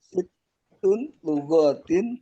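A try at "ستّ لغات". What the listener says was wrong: Situ, bukan situn. Situ lugotin.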